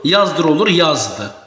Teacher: Çünki yazdır sözündə demək vurğu birinci hecə düşür və heç bir uzanmadan söhbət gedə bilməz. Sözün tərkibində üç cinətli samit var.